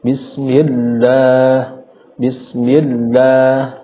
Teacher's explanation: Tetap ditebalkan tetapi dengan tidak terlalu menekan pada tebalnya huruf lam tersebut. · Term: lafzul jalalah